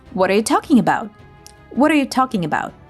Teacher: When a T is between two vowel sounds in American English, it usually morphs into a soft D sound. We call this a tap T.